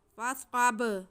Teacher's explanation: स्क़ाद हुरूफ़ मुस्तालिया में से है, इसे मोटा करके सीटी की आवाज़ के साथ पढ़ेंगे।